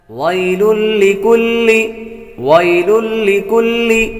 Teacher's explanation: وی یا حروف لین میں سے ہے اس لیے اس کو لمبا نہیں کریں گے